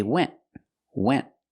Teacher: Again, we do not release the T at the end, so we say went. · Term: stop T